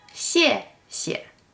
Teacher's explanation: The first 谢 is pronounced with a fourth tone, and the second one is pronounced with a neutral tone.